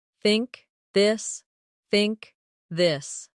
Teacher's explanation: In words like think or this. The tongue comes gently between the teeth. For think it's soft. For this it's voiced. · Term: th sound